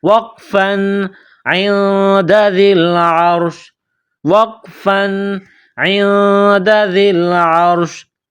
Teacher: جب اس لفظ پر رکیں گے، سٹاپ کریں گے، تو آخر والے حرف شین کو سائلنٹ کریں گے